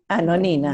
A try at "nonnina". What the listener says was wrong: Ojo a la doble N. Nonnina. Eso, sería la tua nonnina.